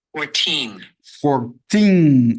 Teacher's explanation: 14, acento também na segunda sílaba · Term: sílaba tônica